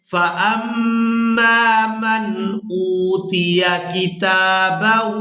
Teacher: میم مشدد پر غنہ کریں گے، آواز ناک میں جائے گی اور اس آواز کو کچھ دیر ناک میں روک کر رکھیں گے۔